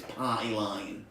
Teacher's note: she aggressively drops the T into a glottal stop